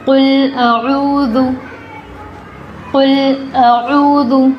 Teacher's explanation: ذال، سیٹی نہیں آئے گی اس کی آواز میں